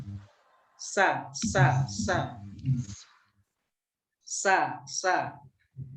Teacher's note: Kemudian sifat selanjutnya dari huruf sin adalah istifal, yaitu lidah tidak terangkat atau bagian pangkal, bagian belakang lidah tidak terangkat sehingga menimbulkan suara tipis